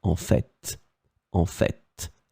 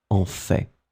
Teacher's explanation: some persons, and I am among them, pronounce the final T